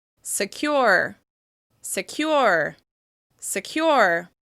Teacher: that first syllable is being reduced in order to focus attention on the second syllable